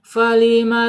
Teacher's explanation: ujung gigi seri menyentuh perut bibir bagian bawah